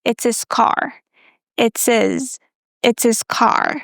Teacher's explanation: the word his can be reduced to is. Again, just like the verb to be.